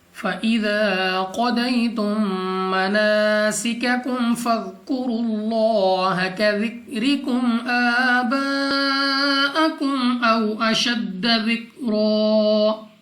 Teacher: قاف مستعلیہ میں سے ہے، موٹا پڑھیں گے منہ اور آواز کو کھول کر. ضاد بھی مستعلیہ میں سے ہے، موٹا پڑھیں گے منہ اور آواز کو کھول کر. اور اس کے بعد یا ساکن سے پہلے زبر یا لین، بغیر کھینچے بغیر جھٹکا دیے پڑھیں گے یعنی جلدی سے. · میم ساکن کے بعد دوسری میم، ادغام شفوی کا قاعدہ ہے، غنہ کر کے پڑھنا ہے · الف سے پہلے زبر ہے الف مدہ، 2 سیکنڈ تک کھینچ کر پڑھنا ہوگا. قاف مستعلیہ میں سے ہے، موٹا پڑھیں گے منہ اور آواز کو کھول کر. ضاد بھی مستعلیہ میں سے ہے، موٹا پڑھیں گے منہ اور آواز کو کھول کر.